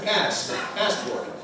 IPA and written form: ˈpæspɔːrt (passport)